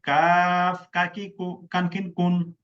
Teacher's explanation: জিহ্বার গোড়া থেকে একটু আগে বাড়াইয়া তার বরাবর উপরে তালুর সঙ্গে লাগাইয়া পাতি কাকের মতো পাতলা আওয়াজে কাফ কাকি কু কানকিন কুন।